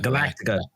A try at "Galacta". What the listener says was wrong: It's not Battlestar Galactica. It's Galacta. Galacta. Just cut a syllable out.